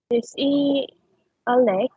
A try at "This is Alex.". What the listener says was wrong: Okay, let me correct you for that word. this word is, it is pronounced as is, not e. Okay. Don't forget to read the sound or to provide the sound of letter S. You don't skip letter S. So if you will read, this will say, this is Alec.